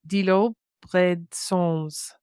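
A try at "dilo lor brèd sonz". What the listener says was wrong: Dilo, lo, bread, dilo, yeah, bread, dilo, there's no R, and then lo is on, and then bread sons.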